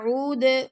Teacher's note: فلا عود، عود عین کا مخرج گلے کے درمیان سے دال پر کلکلا کر رہے ہیں